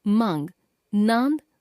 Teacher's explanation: अनुनासिक का उच्चारण करते समय हवा नाक तथा मुख दोनों से बाहर निकलती है।